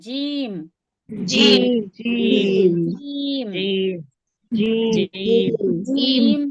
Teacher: जबान के बीच और उसके मुकाबिल ऊपर के तालू से अदा होता है। हां। यह देखें जुबान का बीच यानी बीच का जो सेंटर होता है सेंटर का हिस्सा जुबान के बीच जो बीच बिल्कुल बीच का सेंटर का हिस्सा होता है उसके मुकाबिल ऊपर का तालू से जीम अदा होता है।